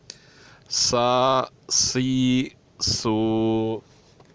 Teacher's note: سین کی جو صفت ہے وہ بھی سخت اور پتلی ہے، تھوڑی اس طرح ادا ہونی چاہیے جیسے سیٹی سی آواز نکلے تو بہتر ہے